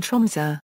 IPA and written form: ˈtrʊmsø (Tromsø)